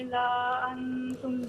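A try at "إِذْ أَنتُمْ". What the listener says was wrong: اذا نہیں ہے، اذ انتم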